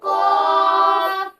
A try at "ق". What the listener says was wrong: क़ाफ बड़ा है, इसको मोटा करके पढ़ने।